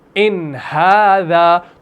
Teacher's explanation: ان نون کے بعد ہا آ گیا تو آپ نون کو ظاہر کریں گے